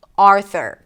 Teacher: Primary stress is on the first syllable